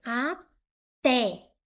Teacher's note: O té é a sílaba mais forte, é a sílaba tônica. Então, a última sílaba foi a mais forte.